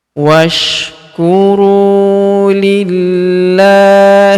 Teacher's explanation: Huruf la kita tahan dan tekan karena terdapat tanda tasydid di sini di atasnya, dan kemudian kita panjangkan 2 harokat karena alif kecil di atasnya ya.